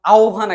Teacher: হ আর ব সংযুক্ত আকারে যখন থাকবে, এই জিনিসটা আমার উচ্চারণের সময় ও ভ হয়ে যায়, ও আর ভ এর উচ্চারণ হয়।